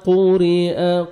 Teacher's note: قاف کو موٹا کر کے پڑھیں گے، را نیچے زیر ہے، را کو باریک پڑھیں گے، را کو جب یہ زبر اور پیش آتا ہے را کو موٹا کر کے پڑھتے ہیں، زیر ہے تو باریک پڑھیں گے، قُرِئَ حمزہ پڑھیں گے۔